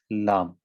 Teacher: زبان کی نوک کو جب تالو کے ابتدائی حصے سے آپ ٹچ کریں گے تو حرف لام کا تلفظ ہوگا